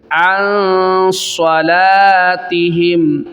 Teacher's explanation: یہاں پہ اخفا کریں گے، چھپا کر گنہ ادا کریں گے